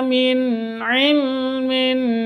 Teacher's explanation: nun mati bertemu dengan Ain cara bacanya jelas karena izhar halqi